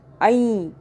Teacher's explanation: یا پہ زور دیں، ٹھیک ہے، تشدید والے حرف پہ